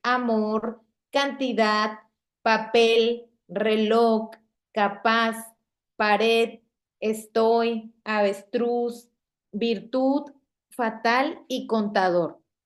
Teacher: Okay, este es el caso de palabras agudas que no llevan tilde. Okay, pero son agudas porque la sílaba tónica sigue estando al final.